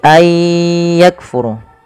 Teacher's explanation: Memasukkan bunyi nun kepada huruf setelahnya, kemudian disertai dengan gunnah, maka idgham bi gunnah.